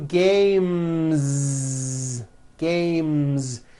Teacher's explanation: sound M which is a voiced consonant so because of that when you add an S the S should also be voiced